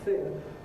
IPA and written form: θɪn (thin)